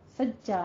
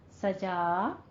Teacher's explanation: इज़ा सजा, सज्जा नहीं कहना है, सजा नरमी के साथ फतह कायमा अदा करनी है, 2 काउंट करना है।